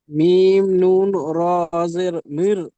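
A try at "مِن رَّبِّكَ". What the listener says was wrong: কেন পড়ছেন আপনি? নুনটা কেন পড়ছেন? তাইজিদ হলো শব্দকে দুবার উচ্চারণ করতে হবে, তাহলে আপনি কার সাথে উচ্চারণ করবেন? মির রব্বিকা, মাশাআল্লাহ, আপনি এটা ইজরা করেন।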